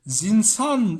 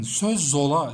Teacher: Mantık şu, ilk sözcük ünsüzle bitecek, ikinci sözcük ünlüyle başlayacak ve sen ilk sözcüğün sonundaki ünsüzü diğerinin başıyla birleştireceksin. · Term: ulama